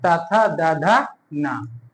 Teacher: जिन वर्णों का उच्चारण करते समय जीभ का अग्रभाग हमारे ऊपर के दांतों को स्पर्श करे, उसे दंतीय व्यंजन कहते हैं। इसमें होता ता वर्ग, त, थ, द, ध, न।